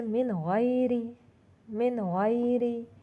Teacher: نون ساکن کے بعد آ رہا ہے غین جو ادنی حلق سے ادا ہوتا ہے، تو اس کو نون کو بھی واضح کر کے پڑھیں گے، نون ساکن کو، मिन गैर, रब्बुन गफूर, रब्बुन गफूर।